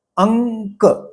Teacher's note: जब यह उच्चारण क वर्ग के अनुनासिक से होता है तब उसके आगे क वर्ग के अन्य व्यंजन रहते हैं। जैसे अंक तो क से पहले न का उच्चार हुआ है। अनुनासिक का उच्चार हुआ है। अ पर जो बिंदी है उसका उच्चार हुआ है।